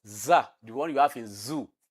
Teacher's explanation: is voiced alveolar fricative